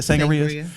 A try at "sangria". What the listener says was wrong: I'm supposed to roll the sangria. I'm supposed to roll the R. I'm supposed to roll, or I just say it.